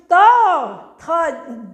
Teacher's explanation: इसको मुर्दा कहते हैं मतलब ये जिबान नीचे टच करती है दंत दांतों से बोलने वाले